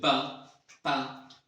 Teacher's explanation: एक साउंड है इसको हम लिप्स से अदा करते हैं, आर्टिकुलेट करते हैं लिप्स से, जैसे कि प प, इसको हम लेबियल कहेंगे।